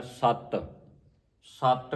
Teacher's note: ਸਤ ਪੋਲਾ ਨਹੀਂ ਪੜਨਾ ਇਹਨੂੰ ਅਧਕ ਲਾ ਕੇ ਪੜਨਾ